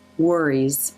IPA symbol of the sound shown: ɹ